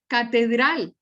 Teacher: catedral tiene la sílaba tónica sobre la última sílaba pero termina en l por lo tanto no se tilde escalón